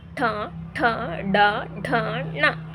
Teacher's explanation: ಮೂರ್ಧವೆಂಬುದರ ಸಹಾಯದಿಂದ ಹುಟ್ಟುವುದರಿಂದ ಇವುಗಳನ್ನ ನಾವು ಮೂರ್ಧನ್ಯಾಕ್ಷರಗಳು ಅಂತಹೇಳಿ ಕರೀತಾ ಹೋಗ್ತೀವಿ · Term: ಮೂರ್ಧನ್ಯ ಅಕ್ಷರಗಳು